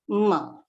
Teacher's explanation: And ma, with the help of the lips and the nose, that is oshtya and nose. You have to use your lips and your nose to pronounce ma. That ma belongs to the pa group.